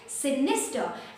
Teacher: we will not pronounce the the r sound which is coming at the end